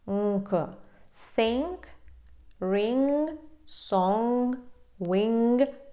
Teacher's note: корінь язика відтягується назад і перекриваєте потік повітря злегка і тому у вас виходить таке носове звучання